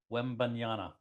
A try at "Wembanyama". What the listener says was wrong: No, it's Ama at the end. Wembanyama. Wembanyama. It's a ma at the end. It's Yama at the end. Wembanyama.